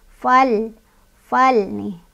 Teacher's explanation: Lam sukunnya nggak boleh mantul